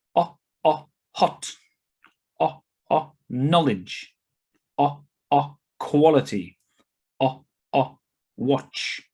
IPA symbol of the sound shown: ɒ